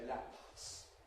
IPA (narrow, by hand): læpʰs